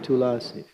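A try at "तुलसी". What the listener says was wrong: Not Tulasi, but Tulasi. So when we pronounce Tulsi, La is half, not full.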